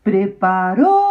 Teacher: A sílaba mais comprida, com certeza, é o rou.